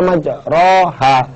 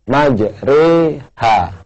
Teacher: di Quran tulisannya majroha, tapi tidak boleh dibaca majroha, harus dibaca majreha, ya, kayak kita bilang sate, ya, namanya imalah atau miring.